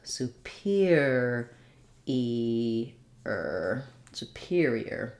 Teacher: So superior, the peer syllable is stressed, has the clear vowel.